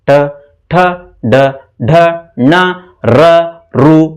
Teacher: ನಾಲ್ಗೆ ಮೇಲೆ ಸುರುಳಿ ಆಕಾರ ಸುತ್ತಿ ಉಚ್ಚಾರಣೆ ಆಗತ್ತೆ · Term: ಮೂರ್ಧನ್ಯಾಕ್ಷರ